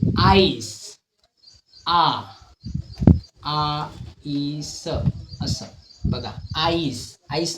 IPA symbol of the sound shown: aɪ